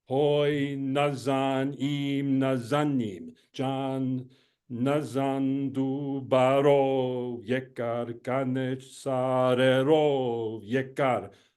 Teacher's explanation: in this text, it's quite simple. The stress always falls on the last syllable.